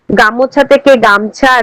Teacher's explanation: শব্দের প্রথম অক্ষরে শাসাঘাতের ফলে শব্দের দ্বিমাত্রিকতা সৃষ্টি বা শব্দ মধ্যগত স্বরবর্ণের লোপ